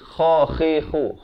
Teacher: kha ni makhrajnya di hujung kerongkong